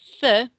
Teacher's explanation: c i is a th sound in Spanish if we speak Spanish that's from Spain if you speak South American Spanish we can say sinko but